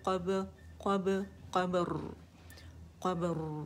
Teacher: रा में तवसत है, आवाज़ थोड़ी सी चलेगी · देख रहे हैं, बाबे भी साकिन है, जब इस रा को साकिन करेंगे उससे पहले साकिन, साकिन से पहले फिर फ़तह आएगा यानी ज़बर आएगी, तो रा मोटी पड़ी जाएगी